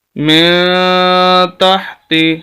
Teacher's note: من تحت، من تحت، یہاں پر بھی اخفا، من تحت، یعنی غنے کی ہی ایک قسم اخفا ہے، نون کی آواز کو کلیئر نہیں کرنا بلکہ چھپانا ہے.